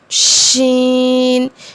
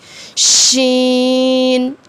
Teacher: شین کو جب پڑھیں گے تو شین کی آواز کو پھیلائیں گے